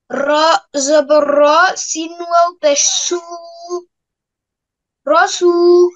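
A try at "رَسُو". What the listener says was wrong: সিন অপেশ সু বলে টানছো কেন? এখানে কি কি হলে টানতে হবে? টানার কারণ কি আমাকে বলো, বুঝাও। যে কোনো টাইম না, এখানে কি হয়েছে এটা বলো। সিন অপেশ সু, সিনে টানছো কেন? তাহলে আমরা জানতে পারলাম যে পেশের পরে যদি জজমুল ওয়াও থাকে তাহলে এক আলিফ টানতে হয়, এই জন্য টেনেছো।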